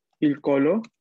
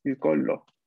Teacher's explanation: siempre que haya una doble L, va a como durar un poco más la L · En italiano, doble L se pronuncia como una L larga